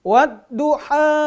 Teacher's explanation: ha kecil, ya, nanti ha tenggorokannya